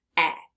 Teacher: In the word said, they're making the sound eh, as if it were a short E.